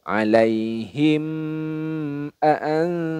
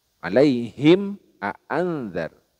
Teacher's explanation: Jadi mim sukunnya dibaca jelas, tidak boleh didengungkan. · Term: idhar syafawi